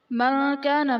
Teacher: من کان میں نون ساکن کے بعد حروف اخفاء میں سے کاف آ رہا ہے تو یہاں پر اخفاء کا قاعدہ ہوگا، یعنی نون ساکن میں ہم غنہ کر کے پڑھیں گے۔